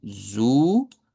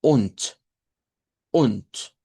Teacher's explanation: En el caso de ONT, la vocal que se está utilizando para la U es una U corta, que es esta que está acá. U larga como ZU, U corta como ONT.